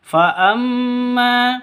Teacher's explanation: mim tasydid gunnah musyaddada karena mim tasydidnya berdiri sendiri, dengung 2 atau 3 ketukan